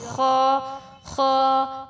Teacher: کس طرح سے خا ادا کیا جا رہا ہے، موٹا کر کے پڑھا جا رہا ہے · زبان کی جڑ پر تالو سے لگے گی. زبان کی جڑ تالو سے لگے گی، لیکن تھوڑا سا فاصلہ رہے گا. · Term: موٹے حروف